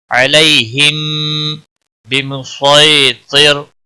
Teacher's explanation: علی یا لین ہے تھوڑا نرمی کے ساتھ کھینچ کر پڑھیں گے. ہم میم ساکن پر اخفاء شفوی ہوگا، میم ساکن کے بعد با آیا ہے، متحرک با آیا ہے اس لیے اخفاء شفوی ہوگا، گنہ کے ساتھ پڑھیں گے.